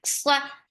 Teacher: Sawt is heavy for fatha, open your jaws. The sound is short.